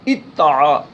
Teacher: تو اب دال چونکہ ساکن ہے تو دال کا تا میں ادغام کیا تو یہ بن گیا اتعا. اب پڑھنے میں دال نہیں آئے گا لیکن لکھنے میں آتا ہے